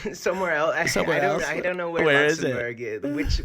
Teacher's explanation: The vocal fry, the California thing, airhead girl, yeah.